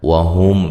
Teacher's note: میم ساکن کا اظہار ہے، غنہ نہیں کریں گے